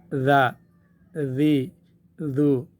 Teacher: زبان ہم دانتوں کے نیچے لے آئیں گے، دونوں اوپر اور نیچے کے دونوں دانتوں کے درمیان میں جب زبان آ جائے گی تو وہاں سیٹی کی آواز نہیں آ سکتی ہے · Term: ذال